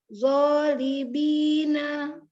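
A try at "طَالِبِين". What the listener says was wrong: Oh, bukan zo, to.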